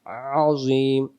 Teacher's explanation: গলা চেপে গলার মাঝখান থেকে একটু চেপে আইন অক্ষর হলকের মধ্য থেকে একটু চেপে পড়তে হয়